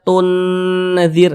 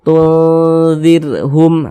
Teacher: Huruf nunnya ini kita samarkan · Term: ikhfa hakiki awsat